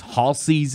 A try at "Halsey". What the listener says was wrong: I don't like how you say her name. The S is more of a Z. Salsa.